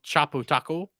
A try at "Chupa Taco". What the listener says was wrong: Wait, you said Chapo Taco. There was no O in there.